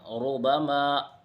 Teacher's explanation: جیسے دیکھو ربما، را پر زبر یا پیش ہو تو را پر ہوگی، جیسے ربما۔ را پر پیش ہے تو را کو پر پڑھا جائے گا